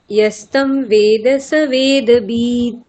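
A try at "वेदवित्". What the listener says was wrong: আবার বিদ বললেন। না না, আমি ওটাতে সমস্যা বলছি না, আমি বয়ের হর্ষইয়ের কথা বলছি, ওটা আপনি দীর্ঘ বলছেন। বারবার বলছি, বেদবিদ।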